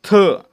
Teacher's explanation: काय म्हणायचं मूर्धन्य म्हणायचं ठीक आहे ड मूर्धन्य झाला आणि थ थ चा उच्चार करताना आपली जीभ आपल्या दाताना स्पर्श करते म्हणून दंत्य